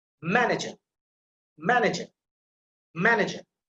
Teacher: so the ma sound, that is emphasized, that is stressed. So stress will be the first syllable if the word ends with er with this syllable of this suffix.